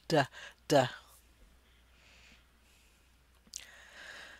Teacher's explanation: It looks like a drum, and the vertical line looks like a drumstick beating in there, "duh duh duh duh." It also is a stop sound at the alveolar ridge